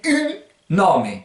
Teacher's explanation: Vous faites ung et vous enlevez le G au dernier moment, ce qui va donner une.